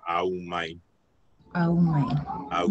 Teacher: Like, they're all complete vowels. Like there's no komaliliu in front of the a in the beginning